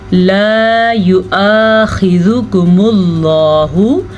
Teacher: हमज़ा को नरमी के साथ पढ़ना है, आइन की तरफ हमज़ा को नहीं लेके जाना।